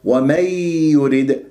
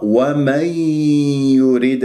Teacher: النون مع التنوين مع الياء، لا أجعلها يا صافية. ومن يريد، هكذا صارت يا صافية، يجب أن أجيب غنة لأنه من الحروف الإدغام بغنة.